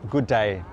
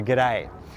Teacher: in Australia what we do is we reduce those two words into really just one · we reduce those two words into really just one, so the good becomes g and the day stays there and we say g'day.